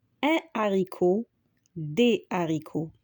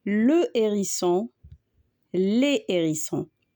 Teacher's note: Avec le H aspiré, c'est comme le H qui bloque la prononciation, alors on ne met ni liaison ni élision.